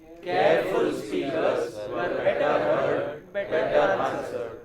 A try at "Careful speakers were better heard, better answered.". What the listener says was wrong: Oh, you are not taking a good pause. Good pause should be heard. Careful speakers were better heard and better answered. Better answered.